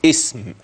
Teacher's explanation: كلمة اسم وحدها إذا تلفظت بها ستنطق بألف في أولها، اسم هكذا، ولكن الهمزة بتاعتها دي همزة وصل.